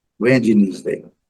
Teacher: temos que ter cuidado para não pronunciar o D e nem esse E.